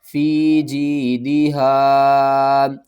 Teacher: یا ساکن سے پہلے زیر ہے، ایک الف کے برابر کھینچنا ہے